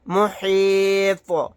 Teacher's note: تو کو ساکن بنا کر پڑھیں گے آیت کرنے کی صورت میں اور یہاں پر قلقلہ بھی کریں گے